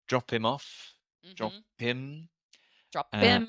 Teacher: in a British accent the H will disappear